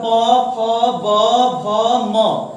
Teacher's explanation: जितना भी सब प वर्ग बोल रहे हैं सब देखिए ओठ जो दोनों ओठ है आपस में सट रहा है, प फ ब सट रहा है ना ओठ है, तो ये जो सट रहा है इसका मतलब कि उच्चारण स्थान इसका कहां से आ रहा है, ओठ से आ रहा है, ओठ से।